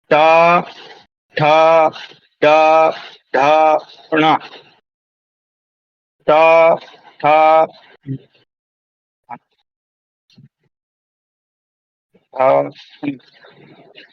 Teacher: तो वो जो स्थान है जहां पर जीभ टकरा रही है ट वर्ग बोलने में उसको हम कहते हैं मूर्धा।